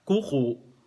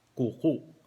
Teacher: yung first syllable, long vowel. Yung last syllable, merong glottal stop